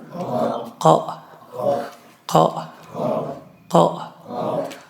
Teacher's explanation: زبان کی جڑ نرم تالوں کے ساتھ ملا کر قاف ادا ہوتا ہے